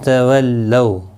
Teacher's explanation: لو وولین ہے، تھوڑا نرمی کے ساتھ کھینچ کر ادا کریں گے